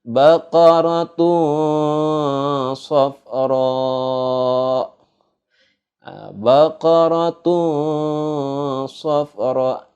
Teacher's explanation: Bacanya itu seperti huruf eng gitu. Jadi agak samar, nggak jelas. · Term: ikhfa